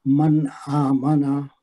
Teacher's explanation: ساتھ الف مد ہے، 2 حرکت لمبا کریں گے. من آمنا، من میں نون کا یہاں پہ اظہار ہوگا، اگلے کلمے میں حمزہ آ رہی ہے، اور آمنا میں حمزہ پہ کھڑی زبر ہے، 2 حرکت لمبا کر کے پڑھیں گے.